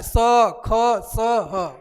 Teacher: घर्षण करते हुए बोला जाता है इसलिए इसका नाम उष्म व्यंजन पड़ा है